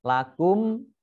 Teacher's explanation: mim sukun bertemu dengan huruf Kaf dibaca jelas bacaan izhar syafawi